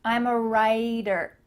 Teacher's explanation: Again, we have that T in the middle of the word changing to a D.